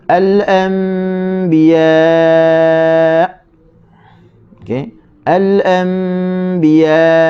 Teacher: Poin yang ketujuh adalah mana-mana huruf nun yang ada tulisan mim kecil ekor ke bawah di atasnya, maka dibaca dengan mim. Tutup mulut dengan 2 harakat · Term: iqlab